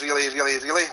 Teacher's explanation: so I can put an emphasis on the R to roll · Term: roll R's